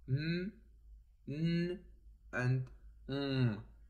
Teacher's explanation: the velum is lowered to let the airstream pass through nasal cavity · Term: nasal consonants